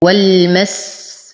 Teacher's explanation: أصبر على السين فهي ساكنة، ودائما زمن الحرف الساكن أطول من زمن الحرف المتحرك. · أنتقل من فتحة الواو إلى إسكان اللام القمرية. وأصبر عليها فهي بينية.